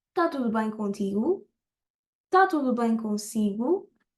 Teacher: And another thing that I can make it sound more Portuguese is not to pronounce the esh on está.